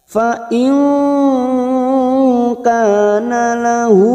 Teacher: Fa in nun sukun bertemu kaf ikhfa hakiki, kita samarkan bunyi nun sukun 3 harokat. Fa in kana lahu, kaf fathah diikuti alif 2 harokat.